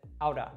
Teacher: that t sound in the middle actually morphs to kind of a d sound · Now, this is very similar to the R sound in Latin languages like Spanish and Portuguese. So it's just a very quick flick of the tongue at the top of the mouth